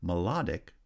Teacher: melodic has stress on the second syllable